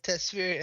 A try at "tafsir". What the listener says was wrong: Tafsir, my friend, it's called it's called tafsir, not tasfir. No, you said tafsir, tasfir.